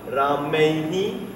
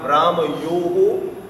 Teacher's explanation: So the visarga doubles, it reflects basically the last vowel.